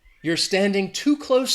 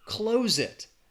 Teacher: the adjective has that S, close. And the verb, to close something, has that Z sound